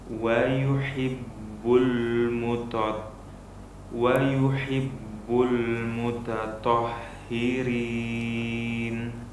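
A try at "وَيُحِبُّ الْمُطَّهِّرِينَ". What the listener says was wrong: Yang pertama lamnya hati-hati, jangan tebal. Bul itu tebal. Kemudian yang kedua haknya harus kita perhatikan. Al mutatahhi, hak besar.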